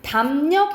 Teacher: 자, 그리고 바로 옆으로 가보면 또 비음화 현상인데 보면은 미음, 이응 뒤에 연결되는 리을은 니은으로 발음된다라는 거예요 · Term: 리을의 비음화 현상